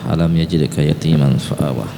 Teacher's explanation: Perhatikan, alam yajidka, itu alam mim mati bertemu dengan huruf ya, maka dia disebut izhar syafawi, tidak dengung